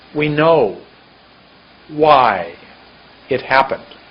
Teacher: Happened was much longer than it, and know was much longer than we.